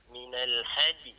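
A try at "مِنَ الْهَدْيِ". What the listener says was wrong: Okey, boleh insyaAllah. Tak apa, berlatih insyaAllah lepas ni.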